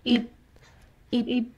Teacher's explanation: When you're pronouncing it, your lips should be pressing each other at the end. Ib. So it's ib, ib, ib, but not too tightly, ib. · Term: bib batchim